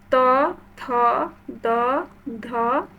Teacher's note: আমাদের আমরা মুখের সাহায্যে উচ্চারণ করছি তখন দেখো এগুলো কিন্তু দাঁত জিহ্বাটা দাঁতের গোড়ার উপরের মাড়ির সাথে লাগছে তাহলে এটা কিন্তু দন্তবর্ণ